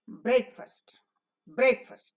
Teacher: shortened in both duration and loudness and we say breakfast breakfast because the accent falls on break and the unaccented syllable is shortened